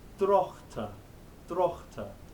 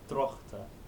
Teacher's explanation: You've learned not to kind of pronounce it when you write English, but it's being pronounced in Middle English, and it's a sound, which is like a G, but rather than stopping it and going g, you keep it going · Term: GH thing